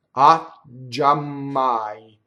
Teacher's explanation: So we have to stop twice, both on the G and on the M. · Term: double